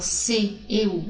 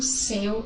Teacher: porque o primeiro seu é o E fechado e o segundo céu é aberto